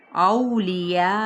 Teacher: ہم نے اس کو 4 حرکت یا پھر کیا ہے 2.5 الف کے برابر، جس کو 4 سے 5 حرکات بھی کہا جاتا ہے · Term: مد متصل